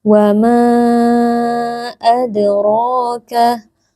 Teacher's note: huruf dal sukun dipantulkan bunyinya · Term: qalqalah sughra